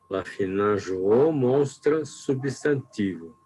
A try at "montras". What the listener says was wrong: Não tem o S aí, hein? É montras. Montras.